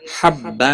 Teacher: تنوین کے بعد حروف اخفا کا فا آیا ہے، اخفا حقیقی ہوگا، غنہ کے ساتھ پڑھیں گے